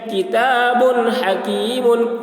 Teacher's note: किता बादो पेश बुन, किताबुन, हा ज़बर हा, बा के ऊपर दो पेश की तनवीन है, तनवीन के बाद हरूफ हल्की में से हा आ रहा है, इसलिए तनवीन को ज़ाहिर करके बिला गुन्ना के जल्द पढ़ेंगे, इसको इज़हार कहते हैं